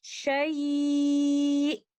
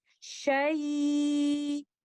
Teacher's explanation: تو اب یہاں پر لیٹر حمزہ تلاوت کو روکتے ہوئے آپ کو کلیئرلی سنائی دے سکتا ہے، لیکن فرض کیجئے اگر میں نبر کے بغیر رکوں تو میں کچھ اس طرح سے اس لفظ کی ادائیگی کروں گی، شیء۔ تو یہاں پر ایسا محسوس ہوتا ہے کہ میں نے لیٹر حمزہ کو ادا ہی نہیں کیا